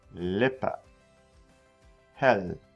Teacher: the l in german is similar to the l in english except for it's more at the front of the mouth